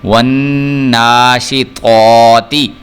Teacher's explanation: تو جو ہے اس کو پر کر کے پڑھنا ہے، جبکہ جو تا ہے اس کو ہم نے پر کر کے نہیں پڑھنا